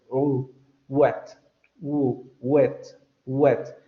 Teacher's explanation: Aquí va a tener dos puntos de articulación, labio velar, es decir, mientras articulas con el labio, también vas a subir la lengua hacia los velos